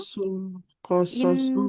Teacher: Qasasul shotnya nggak panjang